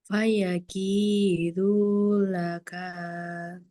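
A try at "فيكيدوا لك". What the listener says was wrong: kepanjangan. Laka. Laka. Du. Kakak dunya kurang jelas. Du. Du. Du. Fayakidu laka.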